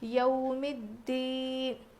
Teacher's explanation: تشدید آنے کی وجہ سے یہ الف کو بھی نہیں پڑھیں گے، لام کو بھی نہیں پڑھیں گے، بلکہ اس کے بعد والے حرف سے ہم ملا کر پڑھیں گے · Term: حروف شمسی